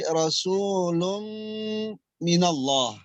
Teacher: cara membacanya supaya langsung masuk huruf mim. Jadi enggak lagi rasulun mim, tapi rasulun minallah ya. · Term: idgham bi gunnah